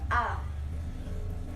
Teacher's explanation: Kemudian vokal madya, vokal yang dibentuk dengan menempatkan posisi lidah di bawah